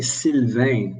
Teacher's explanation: in french the l is clear and the vein it's a nasal